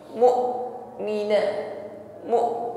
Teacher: Saat menekan huruf hamzah sukun ini maka nampak sifat syiddah, inhibas jarayan saud sehingga tertahan aliran suara. Mu'mina, mu tertahan ya, karena makhrajnya hamzah ini tertutup dengan sempurna. Maka jangan ada lagi suara yang masih mengalir.